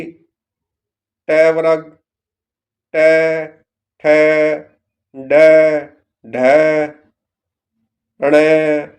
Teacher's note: इनका उच्चारण तालु के ऊपरी कठोर भाग या मूर्धा से होता है।